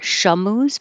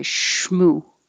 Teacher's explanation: the sh and the m no delay